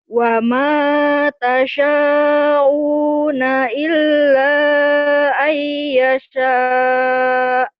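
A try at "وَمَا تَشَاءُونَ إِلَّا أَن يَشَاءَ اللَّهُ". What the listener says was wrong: wa ma tasha'u gitu, jangan tasa'u, jangan tasa'u. Wa ma tasha'una illa ayyasha Allah illa ayyasha Allahu Rabbul Alamin. Jangan buru-buru, ulang. tasa'u, bukan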